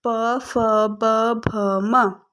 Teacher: ओष्ठ्य दोनों ओठों से प, फ, ब, भ, म।